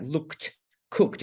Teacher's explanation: So after a K, like looked, cooked, it sounds like T.